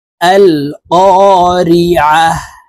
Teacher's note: আইনকে হলকের মধ্যখান থেকে চাপ দিয়ে উচ্চারণ করতে হবে